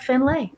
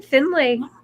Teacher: with an emphasis on the fin and a clear lay at the end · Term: lay ending